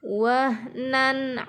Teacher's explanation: ayat 14 juga terdapat bacaan izhar halq wahnana di sini letaknya tanwin bertemu dengan huruf Ain dibaca izhar atau jelas